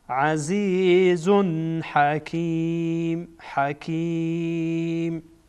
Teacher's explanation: اینجا تنوین اظهار میشه چرا که بعدش ها آمده و ها از حروف اظهار هست.